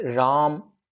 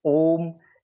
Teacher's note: प्लुत स्वर को अपन ऐसे भी समझ सकते हैं, जैसे किसी का नाम है राम, सामान्यतः इसका उच्चारण अपन करते हैं राम। अगर इसी को अपन पुकारते हुए अगर इसका उच्चारण करेंगे तो अपन इसको राम थोड़ा सा लंबा खींचेंगे, इसीलिए इसको प्लुत स्वर बोलेंगे।